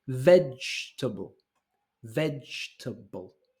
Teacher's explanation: this is three syllables all the emphasis is in the first one